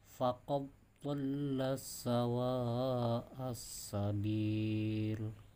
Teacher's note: ketika bertemu dal sukun bertemu huruf dhad, namanya idgham mutaqaribain, jadi tidak boleh dibaca qalqalah, dibacanya lebih identik pada huruf dhad.